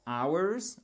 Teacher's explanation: si on ne prononce pas le H c'est ours